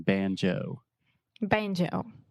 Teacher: we really exaggerate that moving vowel the o sound